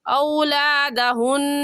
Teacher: نون مشدد ہے اور نون مشدد پر ہمیشہ غنہ کرتے ہیں، غنہ کریں گے.